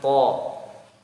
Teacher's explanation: Seperti misalkan to ya. Huruf to belakang lidah sampai tengah lidah naik ke atas. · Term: tebal